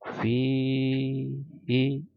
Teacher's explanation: ada ya sukun di sini setelah kasroh, maka fi ini akan menjadi panjang, ya. Membacanya 2 harokat atau 2 ketukan, fihi, gitu ya. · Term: mad tabi'i